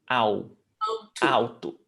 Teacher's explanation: The L is pronounced as U, au, Alto. alto.